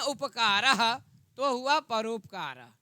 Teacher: अ का उच्चारण स्थान कंठ है, उ का उच्चारण स्थान ओष्ठ है। तो जो कंठ ओष्ठ वाला स्थानीय होगा वर्ण वही तो होगा। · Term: कंठोष्ठम